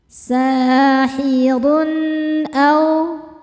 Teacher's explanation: Berikutnya ada izhar halqi. Karena ada tanwin dommah menghadapi huruf halqi atau tenggorokan yaitu hamzah. Maka tanwinnya dibaca jelas.